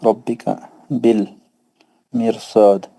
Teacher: را ساکن کے بعد مستعلیہ کا حرف ہے نا. ہاں سر را ساکن تو موٹا پڑھیں گے کیونکہ را ساکن کے بعد صاد آ رہا ہے حرف مستعلیہ میں سے